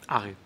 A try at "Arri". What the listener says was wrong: You roll the R a bit too strongly.